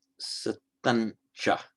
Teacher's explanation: Where you have the final anuswara, the final subdotted M, followed by cha, meaning and, it is often possible, and it's quite common, to change that to satancha. So the M there becomes the nasal corresponding to the following consonant. So satancha, palatal.